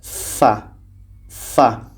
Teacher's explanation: bibir bawah menempel ke gigi seri atas